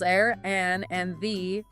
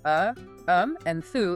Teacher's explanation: articles a, an, and the are reduced to uh, um, and thuh in common [music] speech, and they often nearly vanish.